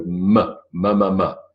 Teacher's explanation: I don't need the alveolar Ridge I just need my lips to go mamama nut alveolar Ridge mirth bilabial both lips moving